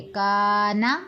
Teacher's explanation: تو اس کو ہم بالکل کھینچ کر ادا نہیں کریں گے، کا کو کھینچیں گے، نون کو نہیں کھینچیں گے، کانا، نون زبر نا، کانا، کانا، اگر ہم نے کر دیا تو سمجھو ہماری غلطی ہو گئی، مسٹیک ہے یہ ہماری، یہ پھر ٹھیک کریں اپنی، ٹھیک ہے۔